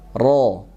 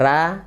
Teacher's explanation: ada tipis dan tebal kalau roll ini bisa tebal bisa tipis kalau dalam keadaan fathah maka hukumnya tebal